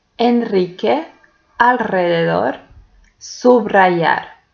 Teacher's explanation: we pronounce the letter r like rr when it goes after l, n, or sub.